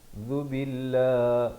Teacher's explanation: zal di hujung lidah baris dhammah